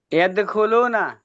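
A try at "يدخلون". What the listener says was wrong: মাশাআল্লাহ মাশাআল্লাহ মাশাআল্লাহ,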